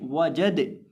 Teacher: अब यहाँ हमारे पास इस लफ्ज़ के अंदर पहले नंबर पर वाव है और वाव को पढ़ते वक्त हमेशा होंठों को गोल करके पढ़ा जाता है, तो इसको हम पढ़ेंगे वाजादा वाजादा। इसी तरह आखिर पे ये जो दाल है इसको हम यहाँ वक़्फ़ करते वक्त साकिन कर देंगे